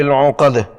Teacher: اگر اس آیت پر رکنا ہو تو آخری دال وقف کی وجہ سے ساکن کرنا ہوگی، وقف بالاسکان اور قلقلہ ہوگا